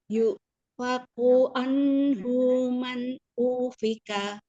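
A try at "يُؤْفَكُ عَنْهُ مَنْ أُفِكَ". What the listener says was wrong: Nadanya, nunnya masih dihentak-hentak. Anhu, jangan an, maksudnya nekennya jangan keras-keras banget. Iya, hati-hati ya nunnya jangan teken-teken ya. Yang neken-neken tuh hamzah aja lah.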